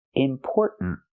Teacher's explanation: The tongue goes up and makes a stop T at the end.